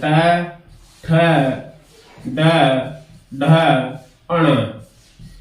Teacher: मूर्धन्य वर्ण है, ये मूर्धा से उच्चारित होते हैं